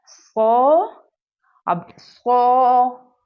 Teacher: صاد کو ہم نے موٹا کر کے پڑھنا ہے، تفخیم کی حالت میں پڑھنا ہے